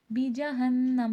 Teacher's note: نون پہ تشدید ہے، نون مشدد کا غنہ ہوگا